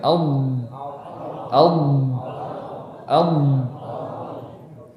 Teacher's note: Jadi yang benar tepi lidah bertemu dengan gigi geraham atas, ya, yang ditandai warna ungu ini. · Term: huruf dad